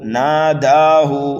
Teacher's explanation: هل اتاک حدیث موسیٰ اذ ناداہ ربہ بالوادی المقدس طویٰ، دیکھیے اذ ناداہ، نرمی کے ساتھ پڑھنا ہے دال کو، ناداہ، نون اور دال کو کھینچنا ہے، ہا کو جلدی پڑھنا ہے